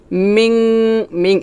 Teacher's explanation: মিং নাকের ভিতর থেকে গুণাটা করতে হবে, জিব্বার আগা উপরের তালুতে লাগাবেন না। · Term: ইকফা গুন্না